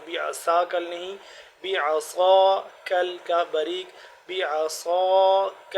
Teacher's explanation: صاد موٹا پڑھیں گے اور سین سے جدا کر کے